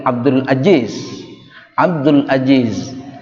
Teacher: Jawa tidak punya zai, ketukar dengan j.